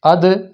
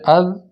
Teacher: اد میں زبان جڑی رہی ہے، اد اس کے اندر زبان لگ کے ہٹ گئی ہے۔ تو یہ 5 حروف ایسے ہیں جن میں زبان یا ہونٹ یا جہاں سے بھی وہ حرف ادا ہو رہا ہے وہ دونوں اعضاء لگ کے فوری ہٹ جائیں گے تو قلقل کی آواز پیدا ہوگی۔ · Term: قلقلہ